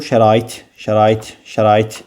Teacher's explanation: Xeyr, vurğu şərait. İt hecasına vurğu düşür. Ona görə də sonuncu hecadadır.